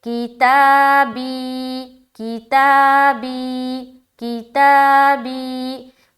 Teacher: بی یا ساکن سے پہلے زیر ہے، یا مدہ ہوگی، یا مدہ کو ایک الف کی مقدار کے باقدر کھینچ کر پڑھیں گے